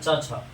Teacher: च छ का उच्चारण होता है आपको तालु से। तालु यानी इसे बोलते हैं च छ, तो तालु यानी जिसे हम लोग जी भी कहते हैं, तो जी से यानी तालु से जिसका उच्चारण होता है ना उसे तालव्य वर्ण कहते हैं।